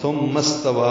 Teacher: واو کی مد جو ہے مد منفصل 4 حرکات لمبا کریں گے